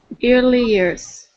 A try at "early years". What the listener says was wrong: Okay, instead of ear, early years.